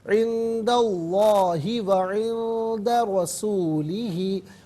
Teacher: را پر زبر ہے رسول میں، را کو پر کر کے پڑھا جائے گا